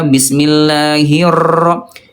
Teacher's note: huruf r-nya ayah bunda terlalu bergetar ya. Bismillahirra itu bergetar banget ya.